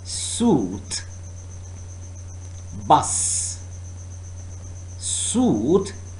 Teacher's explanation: air is forced to tongue and alveolar ridge sued bus soothed bus further the next sound with us is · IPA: /s/